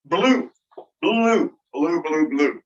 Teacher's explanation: the regular rule you right and where would the you go it's in the back and it's high in my mouth and it's kind of tense